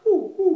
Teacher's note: in the back of the throat, sort of that hooty owl sound.